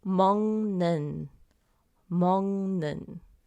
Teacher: When the kiok meets nian, the kiok sound turns into an NG. We have a sound that turns into 먹는, 먹는.